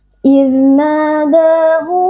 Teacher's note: Huruf dzal merupakan huruf rokhawah, kita membacanya dengan lembut, tidak boleh diberi penekanan berlebihan